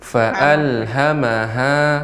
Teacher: ketika mengucapkan fa'alha nggak boleh ditekan nek. Kalau ditekan jadi panjang. Fa'alha maha, tidak.